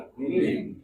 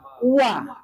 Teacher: Waw, ba sama mim itu keluarnya di antara dua belah bibir dan sedikit direnggangkan bagian waw.